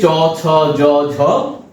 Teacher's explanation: তেমনি চ, ছ, জ, ঝ যখন আমরা উচ্চারণ করছি তখন জীবভার অগ্রভাগ তালুতে স্পর্শ করছে এবং মুখবিবরের যে তালু অংশটা আগের দিন আমরা মোটামুটি একটা রাফলি যদি দেখাই তাহলে এই অংশটা হচ্ছে তালু। জীবের অগ্রভাগ স্পর্শ করছে। তারপর কিছুটা ফাঁক হচ্ছে। সেই ফাঁকা অংশ দিয়ে শ্বাসবায়ু বেরিয়ে আসছে · জিভের অগ্রভাগ স্পর্শ করছে, তারপর কিছুটা ফাঁক হচ্ছে, সেই ফাঁকা অংশ দিয়ে শ্বাসবায়ু বেরিয়ে আসছে, তখনই কিন্তু চ ছ জ ঝ উচ্চারিত হচ্ছে। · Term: তালব্য ধ্বনি